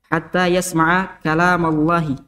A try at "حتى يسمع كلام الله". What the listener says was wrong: Oh, terlalu cepat itu tebalnya Allahnya ya. Kalam Allah. Terlalu cepat tuh tebalnya. Jadi di mim sudah tebal. Jadi bunyinya dhamma. Kalam Allah. Jadi bunyi tebalnya itu di Allahnya yang di tengah. Terlalu cepat kok tebalnya. Ma tidak tebal. Hatta yasma'a kalamallahi. Kalamallah. Kalama.